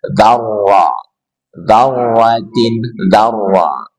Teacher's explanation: Berarti di sini ada ra bertasydid. Ra bertasydid dan berharokat fathah, maka wajib dibaca tebal.